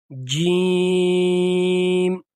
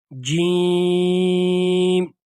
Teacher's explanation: اس جیم کو کھینچیں گے 3 الف کی مقدار کے برابر، کیونکہ اس کے اوپر مد آیا ہوا ہے، اس کو ہم کھینچ کر پڑھیں گے جیم۔